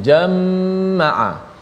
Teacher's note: Imam Khalaf membaca dengan jamaah, dibaca dengan sabdu, mim diletakkan sabdu. Jamaah, bila ada sabdu kena dengunglah, huruf mim tu bila sabdu kena dengung